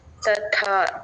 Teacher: first త అల్ప ప్రాణం రెండో త మహాప్రాణం